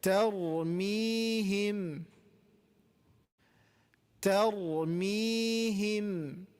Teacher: ta is light, ra is heavy here.